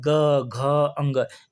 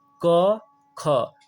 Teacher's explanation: जब ग का उच्चारण करेंगे घ का उच्चारण करेंगे अंग का उच्चारण करेंगे तो गला में कंपन ज्यादा होगा लेकिन यही क और ख का जब उच्चारण करेंगे तो दोस्तों गले में कंपन कम होगा